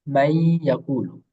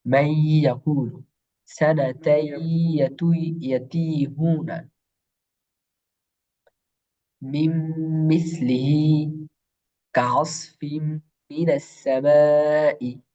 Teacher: ইয়াকে তাসদীদ দিয়ে গুন্নার সাথে মিলায় পড়বো